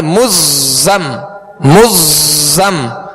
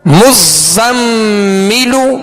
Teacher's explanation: زا کو سختی میں پڑھیں گے، سیٹی کی آواز پیدا ہوگی